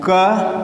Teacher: क आवाज़ कहाँ से निकलती फील हो रही है, गले से, कंठ से ना, कंठ मतलब गला, तो आवाज़ हमारी गले से निकलती फील हो रही है। इसके लिए इसको कहा जाता है, क वर्ण जो है कंठव्य है, कंठव्य वर्ण है।